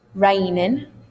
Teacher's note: Notice I took off the ng.